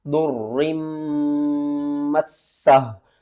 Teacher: मीम के ऊपर आपने गुन्ना भी करना है।